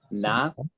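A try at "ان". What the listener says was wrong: But with the sukoon, it's not na. So how do you say it?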